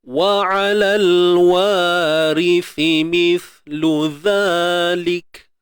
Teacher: Dua-dua sa ni ada titik 3 ni, keluarkan hujung lidah. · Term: keluar ujung lidah